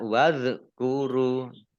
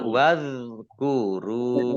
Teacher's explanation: Tadi zal sukun ini bukan qalqalah ya. Jadi tidak dipantulkan. Jadi bacanya tidak wadhkuru.